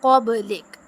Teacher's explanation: अब बा पे जो है ना वो कलकला करेंगे